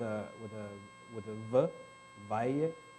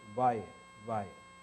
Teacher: instead of saying valle with a v, valle, they say it with an approximant